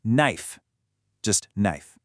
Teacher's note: In knife, you don't say the K. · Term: silent letters